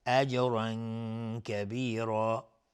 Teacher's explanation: جیم اینجا قلقله میخواد چون ساکنه